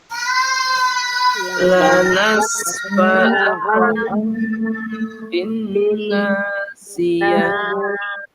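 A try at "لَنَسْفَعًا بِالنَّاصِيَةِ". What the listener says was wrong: Bu, ya dengungnya sempurnakan 2 harokat. Ini juga bin. Nah, ini kan dengung bin, tapi naknya kan mad ya. Nah, bin ke rongga mulut.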